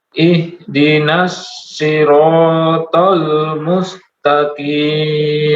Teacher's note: Shad tebal, ra tebal, ta tebal.